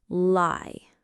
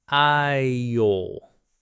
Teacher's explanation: First word with the light L at the beginning, lie. Now, with the dark L at the end, aisle.